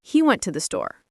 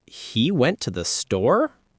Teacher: With a rising intonation, you communicate surprise or a question immediately.